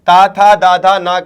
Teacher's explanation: त वर्ग का उच्चारण स्थान क्या है भैया? दंत है।